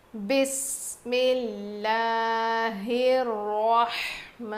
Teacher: ہا کو رو سے ملائیں گے اور رو کو موٹا پڑھیں گے